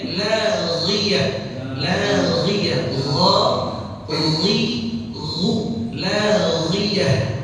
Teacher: huruf ghain itu makhrajnya, ya itu ada di aqsal lisan, aqsal halq, ya bagian pangkal atas tenggorokan. Dan kalau kita mau serupakan gitu, kalau kita mau mirip-miripin, itu mirip atau serupa dengan kondisi kita kalau lagi kumur-kumur pakai air.